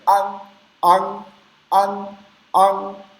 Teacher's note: E o segundo, com a garganta, o G na garganta, an. Não chega a ser tão nasal esse som, isso sai muito pouco pelo nariz.